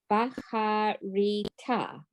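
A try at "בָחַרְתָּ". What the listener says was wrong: Okay, but it's the end of the syllable and it's silent. Va. Har. Ta.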